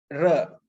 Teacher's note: a voiced alveolar drill or rhotic